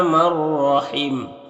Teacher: نون ساکن کے بعد را ہے حروف یرملون میں سے تو نون کو را سے ملا کر بغیر غنہ کے پڑھیں گے، اس کو ادغام تام کہتے ہیں۔